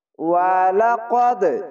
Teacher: তো শুরু থেকে শেষ পর্যন্ত ভিডিওটি দেখবেন, ইনশাআল্লাহ অনেক দ্রুত স্পিডে পবিত্র কোরআন রিডিং পড়তে পারবেন এবং বুঝতে পারবেন। ওয়ালাকাদ, কলকলা নিচে ধাক্কা মেরে আসবে। ওয়া জবর ওয়া, লাম জবর লা, ওয়ালা, কদ দাল জবর কদ, ওয়ালাকাদ।